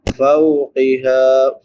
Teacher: فا کے بعد واولین ہے، نرمی سے پڑھیں گے